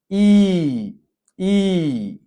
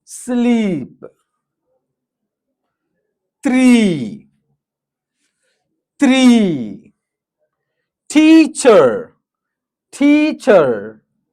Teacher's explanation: lips clearly spread, jaw nearly closed, tongue high front, long and steady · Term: long monophthong sound